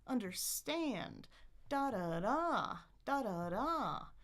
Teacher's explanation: I'm going to start in the middle. I'm going to go down. And then I'm going to go all the way up.